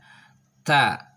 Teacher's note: tempat keluarnya adalah ujung lidah disentuhkan dengan gigi seri